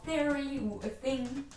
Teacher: Dentales, ça veut dire que pour produire ces sons, on utilise la langue sur les dents. En gros, c'est le th en anglais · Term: consonnes fricatives